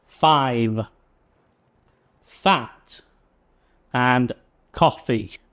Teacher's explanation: So f sound, our teeth should rest on our bottom lip and make the sound, not like the v. So this is unvoiced.